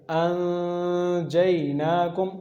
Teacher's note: थोड़ी देर आवाज़ को नाक में ले जाएंगे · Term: इख्फा